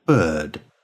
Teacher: The sound is a central accented vowel sound with no lip rounding. Technically, this vowel sound is the open, mid, central, unrounded vowel. It's a sound that doesn't normally occur in other languages besides English.